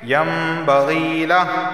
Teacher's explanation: نون ساکن کے بعد با آیا ہے تو اس نون کو میم سے بدل دیں گے